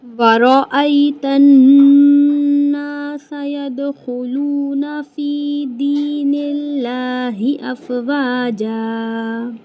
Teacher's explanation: رو کو موٹا کر کے پڑھیں گے، رو کے اوپر زبر ہے